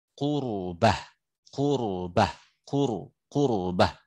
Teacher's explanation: ra yang sukun sebelumnya dhammah. Qurbah, qurbah, qurbah. Nah, itu tebal.